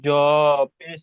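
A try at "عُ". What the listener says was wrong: এটা জ নয়, এই অক্ষরটা হলো জা।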